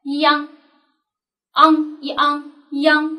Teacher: 央呢是一个后鼻韵母